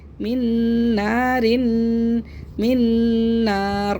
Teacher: نون کو نون سے ہم نے ملایا بھی اور غنہ بھی کیا ہے